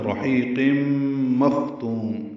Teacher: قاف پر تنوین کے بعد میم آنے کی وجہ سے ادغام ناقص مع الغنہ